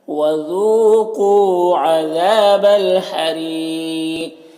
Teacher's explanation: وقف کریں گے تو قاف کا زیر سکون سے بدل جائے گا تو پھر قاف میں قلقلہ بھی ہوگا، اور یہاں پر وقف کی صورت میں مد عارض وقفی بھی ہوگا، تو اس طرح سے پڑھیں گے۔